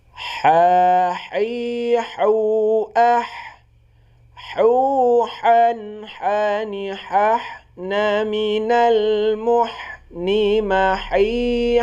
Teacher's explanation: ini bunyi huruf ha di tengah tenggorokan